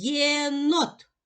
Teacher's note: буква є позначає два звуки. М'який приголосний звук й, який ми позначаємо двома рисочками, та голосний звук е